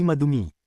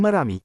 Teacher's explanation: Sa Filipino nagiging R ang D kapag nasa gitna ng salita. Napapagitnaan ng dalawang patinig.